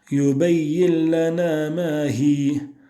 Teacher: Tu remarques qu'il n'y a plus aucune caractéristique du nun à partir du moment où l'idram est pratiqué sans runna, sans nasalisation. Il n'y a plus aucune caractéristique du nun et on lit directement un lam avec une shadda.